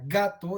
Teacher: hay un cierre y es velar ese cierre se da entre el post dorso de la lengua y el velo del paladar luego hay una liberación y además hay acción de las cuerdas · Cuando producimos el fono inicial de la palabra gato, es bastante claro que este fono es oclusivo, hay un cierre, y es velar, ese cierre se da entre el posdorso de la lengua y el velo del paladar. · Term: oclusivo, velar, sonoro